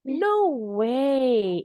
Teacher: Intonasinya di no-nya tinggi.